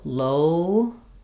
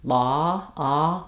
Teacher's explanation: Think of it like an ah, but with rounded lips. So low, more closed and sliding. Law, ah, more open, but still a little bit rounded.